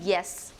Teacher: It is described as a voiced palatal semivowel or glides.